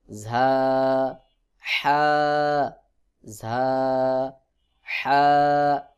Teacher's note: হা কিন্তু হলকের মধ্যখান থেকে উচ্চারণ হবে